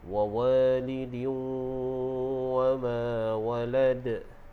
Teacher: baris tanwin yang mana bertemu dengan huruf waw, jadi hukumnya idgham ma'al gunnah. Jadi kita dengung 2 harakat, dan bila waqaf dia jadi hukum qalqalah kubra.